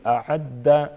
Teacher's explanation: دال مشدد مضبوطی کے ساتھ پڑھیں گے